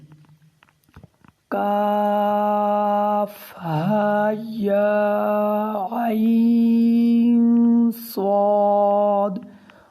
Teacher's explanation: آپ عین میں آپ اخفا کریں گے، اخفا کہتے ہیں ناک میں چھپانے کو۔